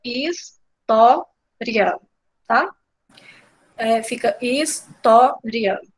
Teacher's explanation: Essa palavra é uma palavra paroxítona, porque se a gente for olhar a palavra toda, a gente percebe que a gente escuta mais fortemente o tó, história, né? O tó é o mais forte.